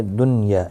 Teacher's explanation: دنیا، یہاں دیکھیں نون ساکن کے بعد یرملون کا یا آیا ہے، یہاں پر اظہار مطلق ہوگا، یعنی نون ساکن کو ظاہر کر کے پڑھیں گے